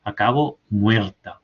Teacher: la palabra muerta tiene una vibrante múltiple en un lugar donde normalmente hay una vibrante simple, ¿no? Hay más hay más de dos vibraciones.